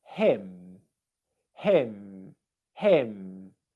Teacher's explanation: the lips are coming together and the airflow comes out through the nose